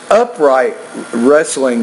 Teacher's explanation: the stress here is on the first not the second syllable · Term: word stress